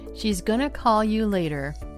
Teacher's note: did you notice that going to has become gonna?